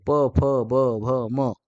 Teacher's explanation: प, फ म्हणजे ओठांचा दोन्ही ओठांचा त्या ठिकाणी स्पर्श होतोय, संगम होतोय आणि ते तयार होतंय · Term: औष्ठ्य